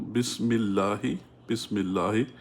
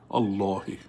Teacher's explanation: In Surah Fatiha, you have, for example, Bismillahi, Bismillahi. Because it's connected, you don't pronounce this Hamzatul wasl. If you were to start on it, you'd say Allahi.